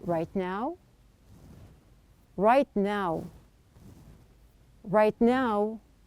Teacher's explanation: there is a difference in my tone. One time it is high and the other time it is low. Now this is what we call here intonation.